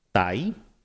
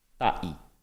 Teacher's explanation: The word for one is ta'i with a glottal stop.